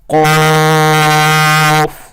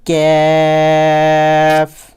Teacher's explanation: پہلا قاف جو ڈاٹ والا قاف ہوتا ہے اسے ہم نے موٹا کر کے پڑھنا ہوتا ہے اور دوسرے کو باریک